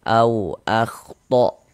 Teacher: Nah, jadi kalau ada huruf waw sukun, ada huruf waw, ada tanda sukun, sebelumnya ada harokat fathah, ada waw sukun yang sebelumnya harokat fathah, maka huruf waw sukunnya adalah huruf lin, sehingganya kita baca lunak ya, lembut saja, mudah.